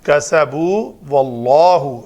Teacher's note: اس میں جلالہ سے پہلے زبر ہے تو اس میں جلالہ کی لام کو پر پڑھیں گے